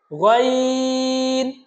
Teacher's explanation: গাইন হরফটা উচ্চারণ হবে খ হরুফটা যে জায়গা থেকে উচ্চারণ হয়েছিল সেই জায়গা থেকে অর্থাৎ কণ্ঠনালীর উপরিভাগ থেকে কণ্ঠনালীর উপরিভাগ থেকে আমরা বলেছিলাম খ ঠিক একই জায়গা থেকে উচ্চারণ